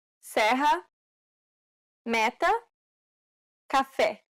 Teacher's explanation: This vowel sound is identical to the E in set. It's known as the open E sound in Portuguese.